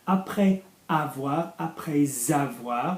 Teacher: we're going to have a link there because of the S